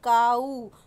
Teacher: तो यहाँ पर मैं आपको डायप्थोंग का जैसे एग्जांपल बताऊँ, काऊ, COW काऊ होता है, लेकिन जब हम बोलते हैं काऊ तो उसमें ओ भी आ रहा है और यू भी आ रहा है। डब्ल्यू की आवाज़ नहीं आती, यू की आ रही है।